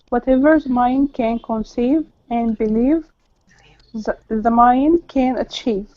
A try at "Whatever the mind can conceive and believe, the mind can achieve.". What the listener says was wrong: Very good. Good pronunciation.